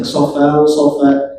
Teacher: Untuk tanwin fathah dibaca tanwinnya dipanjangkan jadi mad iwad.